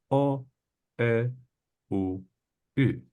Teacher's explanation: we also have 4 round vowels. And in these vowels, I have to keep the shape of my mouth in a round shape.